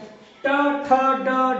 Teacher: तो जब कठोर तालु के मतलब यहाँ पे ये तालु हो गया तो ये तालु के अगले भाग से लगे तो वो मूर्धन्य है, इसको बोलते हैं मूर्धन्य